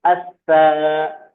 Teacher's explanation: حرف شمسی ہے، تو لام تلفظ میں نہیں آئے گا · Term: حروف شمسی